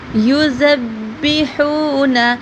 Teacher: ہا حلق سے ادا کیا جائے گا اور ہا کو تھوڑا سا لمبا کریں گے